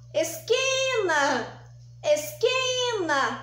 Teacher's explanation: então aqui eu também tenho aqui a penúltima sílaba é a mais forte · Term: paroxítona